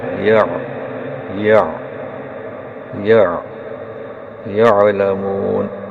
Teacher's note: عین کا مخرج حلق کے درمیان سے، تو دیکھیے یا زبر عین یا یا یا یعلمون، تو یا پر منہ جو ہے، ہونٹ جو ہے کھلتے ہیں رائٹ اور لیفٹ میں، یہ یعلمون یہ۔